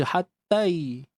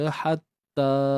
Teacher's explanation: panjangkan ta tu dua harakat